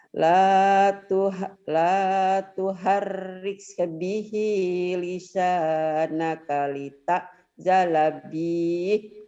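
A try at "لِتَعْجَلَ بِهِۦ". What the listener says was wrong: Salah. Itu kan pendek bihnya, itu kenapa jadi panjang?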